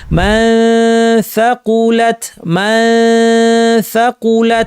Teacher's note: সায়ের মাখরাজের কাছাকাছি জিহ্বা এনে, এখানে জিহ্বা কাছাকাছি এনে নাক থেকে গুন্না করব। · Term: ইখফা